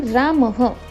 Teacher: कोणत्याही शब्दाच्या शेवटी जेव्हा विसर्ग लागतो तेव्हा ते ह असा उच्चारण